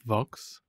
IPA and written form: vɑks (Vox)